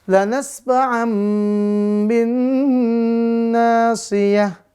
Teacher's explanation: Berarti menandakan ya bunyi n di patatain diganti jadi bunyi m disertai panjang 2-3 harokat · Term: iklab